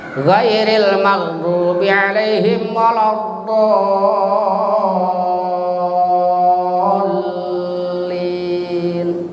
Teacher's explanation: Tapi makhraj dod itu adanya di pinggir-pinggir lidah. Pinggir lidah nempel ke gusi-gusi.